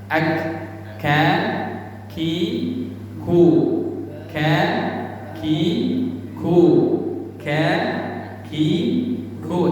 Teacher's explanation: Huruf kaf makharijul hurufnya di pangkal lidah ke langit-langit yang keras.